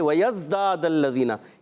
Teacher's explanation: یہاں زا ہے ذال نہیں، یہ سیٹی والا حرف ہے. داد الذین، دال الف زبر دا، اور پھر دوسرا دال جو ہے اس کی زبر ڈائریکٹ لام سے مل جائیں گی.